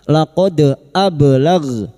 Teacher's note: dal sukun yang mati asli di tengah kalimat qalqalah sugro jangan lupa dipantulkan